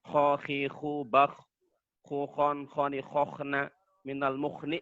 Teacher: Huruf kho berada pada pangkal tenggorokan makharijul hurufnya.